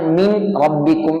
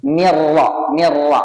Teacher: ഇദ്ഹാം ചെയ്യണം എന്നാലും മണിക്കരുത്